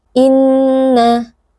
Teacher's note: Inna yawmal fasli kana miqata. Inna, nun bertasydid, wajibul gunnah, wajib didengungkan dengan dengung yang dipanjangkan